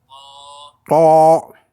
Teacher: Ça, c'est le T du fond de la gorge.